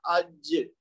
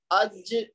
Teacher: اب اج جب جہاں پہ جا کے آپ کی آواز ختم ہو رہی ہے تو آپ خود نوٹ کریں گے کہ زبان کا جو درمیانی حصہ ہے وہ آپ کے تالو سے ٹکرا رہا ہے